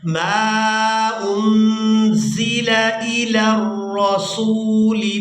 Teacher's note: وَإِذَا سَمِعُوا مَا أُنزِلَ إِلَى الرَّسُولِ نون ساکن پر اخفا کریں گے، اس کے بعد زا کو سختی کے ساتھ ادا کریں گے، اور زا جو ہے یہ سیٹی کی مثل ادا ہوتی ہے